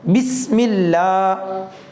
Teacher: وہ سین جو ہے وہ سیٹی کی آواز کے ساتھ